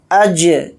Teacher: जीम के ऊपर जज़म है तो जीम के अंदर क़लक़ला भी करेंगे